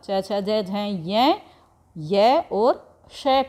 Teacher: च वर्ग च छ ज झ य य और श का उच्चारण तालू से किया जाता है और इन्हें तालव्य कहा जाता है